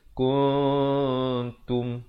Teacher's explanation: Dia bunyi dia di antara nun dan ta. Itu disamarkan. Nak kata nun pun tidak, ta pun tidak. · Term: Ikhfa hakiki